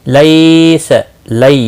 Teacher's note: یالین ہے، تھوڑا نرمی کے ساتھ کھینچ کر ادا کریں گے